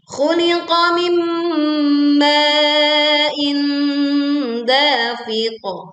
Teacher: qaf sukun dibaca memantul dengan suara yang tebal dan kuat.